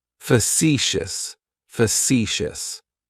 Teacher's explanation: Facetious has 3 syllables, and the stress is on that second syllable. · That first syllable has that schwa